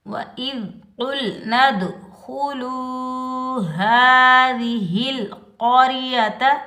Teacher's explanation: ذال نرمی والا حرف ہے تو ذال کو ہم نرمی سے ادا کریں گے۔ ذال پر ہم سیٹی کی آواز نہیں نکالیں گے، بغیر کھینچے پڑھیں گے۔